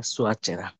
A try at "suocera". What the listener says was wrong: সুয়া না, সুওচেরা। সেরা না, চেরা।